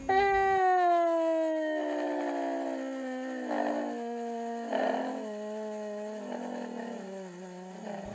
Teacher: air leak with a decrease in pitch and we hear it we hear intermittent entrainment where both vocal cords are at the same pitch but then there isn't enough energy to drive the weaker cord · So we hear the diplophonia. So we hear gradually increasing air leak with a decrease in pitch